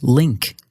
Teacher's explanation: a lowercase L but it sounds a bit different from English in English when we say a word like link the back and front of your tongue both come up towards the roof of your mouth